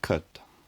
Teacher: in the word cut there's no labial sound like burp or fur so the vowel unrounded